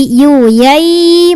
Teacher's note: ketika tanwin bertemu ya atau ya sebelumnya tanwin maka tanwinnya dimasukkan ke Ya sambil dengung jadi yuyyyy masuk ke ya itu ketika ya sukunnya sebelumnya kasrah · Nah, ketika ya-nya sukun punya sifat namanya layin, jadi lembut suaranya, bay, ya. Kemudian ketika tanwin bertemu ya atau ya sebelumnya tanwin, maka tanwinnya dimasukkan ke ya sambil dengung.